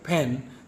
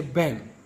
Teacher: Arabic speakers often confuses pa with voiced bilabial plosive b. For example, instead of saying pen, they'll say ben.